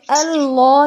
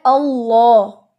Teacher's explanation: آپ نے دونوں لام ہیوی کرنے ہوتے ہیں